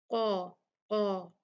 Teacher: قاف جو ہے وہ حروف استعلاء میں سے ہے، حروف مستعلیہ ہے، اس کو ہم بھاری پڑھیں گے قا، اور اس کے ساتھ میں جو الف ہوگا وہ بھی ہیوی پڑھا جائے گا، مفخم پڑھا جائے گا۔